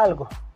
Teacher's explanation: Su descripción articulatoria es en el alveolar lateral y su contexto de aparición es en el resto de contextos, por ejemplo la palabra algo.